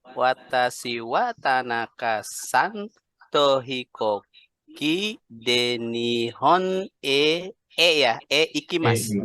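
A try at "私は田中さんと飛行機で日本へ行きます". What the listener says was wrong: Hanya cara bacanya agak ada sedikit patah tadi. Nihon e ikimasu. Watashi wa Tanaka-san to hikoki de Nihon e ikimasu.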